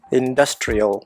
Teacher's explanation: அதில் செகண்ட் சிலபிளில் தான் ஸ்ட்ரெஸ் இருந்தது